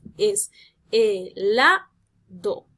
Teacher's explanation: analizo dónde está la sílaba tónica recae sobre la sílaba la